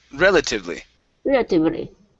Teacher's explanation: so the stress is at the very beginning